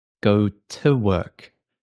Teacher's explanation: we have a strong T in British accents